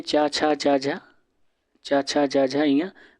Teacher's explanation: च छ ज झ य हमारा क्या होता है तालव्य होता है